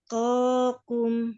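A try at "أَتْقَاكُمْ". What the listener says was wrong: Mana hamasnya?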